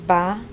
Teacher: the v in latin america we basically pronounce it like a b